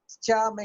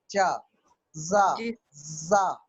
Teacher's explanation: पा, आपने आवाज रोका हवा को और रिलीज कर दिया पा। लेकिन चा में क्या हुआ? रोका और फिर रगड़ से निकाला।